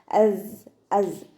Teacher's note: സ ഉച്ചരിക്കുമ്പോൾ ഒരു തേനീച്ചയുടെ മൂളൽ പോലെ ഒരു സൗണ്ടിൽ വേണം ഉച്ചരിക്കാൻ കേട്ടോ. അസ് അസ്.